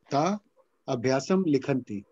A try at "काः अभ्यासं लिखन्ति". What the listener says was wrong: kaha not ka ka te kaha visarga you have to say the visarga